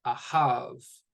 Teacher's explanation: The ha gets the stress. It's that final syllable.